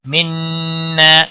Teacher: نون مشدد پر غنہ ہوگا، الف مدہ ہے، ایک الف کے برابر کھینچ کر بھی پڑھیں گے.